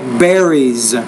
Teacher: when you put s on the end you want to put a kind of a z sound like berries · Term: grammatical word endings